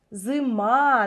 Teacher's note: дое наведу приклад бачимо слово зима як ми його наголошуємо зима наголос іде на звук А